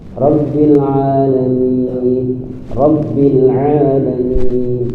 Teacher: ainnya harus nampak ainnya tipis dan keluar dari makhrajnya yaitu di wasatul halq